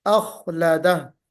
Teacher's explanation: دوسری چیز یہ ہے کہ جو اخلدہ ہے، یہاں پہ خا ہے، خا حرف تفخیم ہے نا، حرف مفخم ہے، یا خا کو تھوڑا پر کر کے منہ بھر کے نکالنا ہے، اخلدہ نہیں بلکہ اخلدہ، بالکل واضح طور سے پڑھنا ہے۔